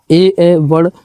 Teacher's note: इनका उच्चारण जो है कंठ तालव्य यानी कंठ तालु से होता है।